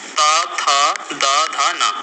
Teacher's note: जिन वर्णों का उच्चारण करते समय ऊपर के दांतों से जीभ का अगला भाग स्पर्श होता है, उसे दंती व्यंजन कहते हैं।